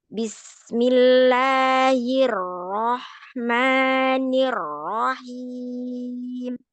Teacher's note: Rnya tebal, pangkal lidahnya dinaikkan karena berharakat fathah ya.